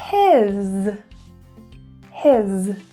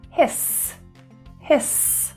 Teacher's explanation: keep it short little bit of voicing we don't want to hear a quick s with no voice